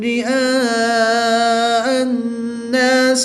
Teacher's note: الف سے پہلے حمزہ پر زبر ہے تو ہم یہاں پر الف مدہ ہوگا. الف مدہ کے بعد حمزہ اسی کلمے میں ہے تو یہاں پر مد متصل ہوگی. 3 سے 5 الف تک کھینچ کر پڑھیں گے